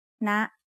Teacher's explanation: High tone starts at a high pitch and rises very slightly.